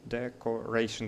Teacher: decoration, the third syllable is stressed